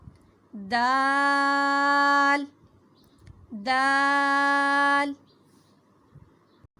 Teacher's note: زبان کی نوک سامنے کے دو دانتوں کی جڑوں سے ٹکرائے گی تو ادا ہوگا دال دال.